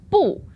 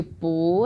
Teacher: Okay, so we've got that tone change. We go from the 4th tone, that's 不, into 不, the 2nd tone.